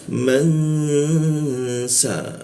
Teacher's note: Nunnya berubah jadi ang. Nah, jadi ang, lalu angnya itu ditahan 2 ketukan.